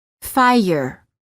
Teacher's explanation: quality of the vowel often changes when the r follows it there is a slight uh sound that is added after certain vowels making it sound almost as if the word contains an extra syllable